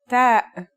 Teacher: The pronunciation is like the English T except you should release your breath with a strong burst of air.